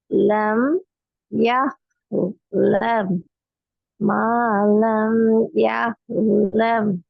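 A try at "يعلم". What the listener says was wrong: யஹ்லம் என்று வந்துட்டு ஐன் வரல. பாத்தீங்களா பாத்து நீங்களே 2 மாரி உச்சரிச்சு காட்டுறீங்க. ஐன மாத்துறீங்களே இப்ப. காக்க போன கிளாஸ்ல நீங்க விட்டது அதே பேர்ல இன்றைக்கு விட்றீங்களே. ஒருக்கா யஹ் என்று உச்சரிக்கிறீங்க. இன்னும் ஒருட்டா யஃப் என்று உச்சரிக்கிறீங்க. இன்னும் ஒரு டைம்ல யா என்று உச்சரிக்கிறீங்க.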